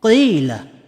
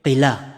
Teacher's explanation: si harf ya ay pinatagal nito ang tunog ng kasra na nasa kanyang unahan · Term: long vowel